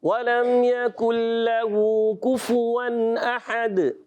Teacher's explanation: کاف پر پیش فا پر پیش، دونوں ہونٹ گول ہو جائیں۔ وَلَمْ يَكُنْ لَهُ كُفُوًا أَحَدٌ۔